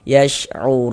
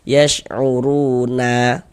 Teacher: Ini kalau kita berwaqaf berhenti di huruf nun, kita baca yash'urun. Jangan dibaca yash'uruna baru berhenti